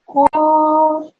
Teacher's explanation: this qaf needs to be pronounced from your throat